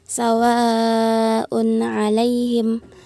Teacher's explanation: tanwin un bertemu dengan huruf ain dibaca jelas dan dihukumi izhar halq.